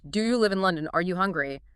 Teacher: you do raise the pitch for yes or no questions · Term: the slide up